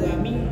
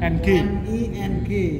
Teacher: Ikhfa itu samar. Samar bukan. Jadi bukan dengung utuh, dia samar dengungnya gitu kan. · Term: ikhfa hakiki